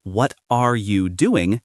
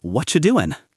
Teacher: Instead of saying what are you doing clearly, we say what you doing? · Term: connected speech